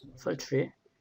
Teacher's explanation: 취 발음할 때는. 그래서 이 R 발음 때문에 T까지도 입술을 동그랗게 만들어주는 거예요. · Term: TR 발음